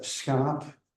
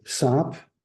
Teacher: The fricative drops out completely. It is deleted. Often related to syllable structure, often related to clusters, like in sch in Dutch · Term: fricative deletion